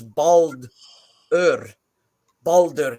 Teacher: the letter R is its own syllable